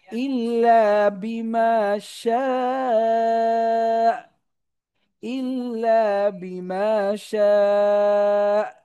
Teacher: তো হামজা সাকিন থাকলে আওয়াজ আটকে দিতে হয়, তো আমরা শাকে চার আলিফ টানার পরে আমরা হামজাতে সাকিন করে আওয়াজ আটকে দিব।